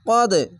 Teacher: কদ, এখানে কলকলা, কদ ধাক্কা মেরে কলকলাটি হবে এবং নিচে সাউন্ড আসবে